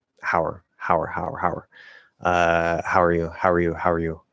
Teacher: a partially reduced ow that is r-colored um so it's like this weird blend between ow and ur